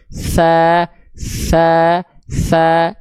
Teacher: Kalau huruf sa bocor nafasnya.